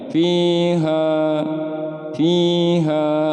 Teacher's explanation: Kasroh bertemu huruf ya sukun. Nah, ini mad tabi'i juga. Dipanjangin 2 harokat cara membacanya.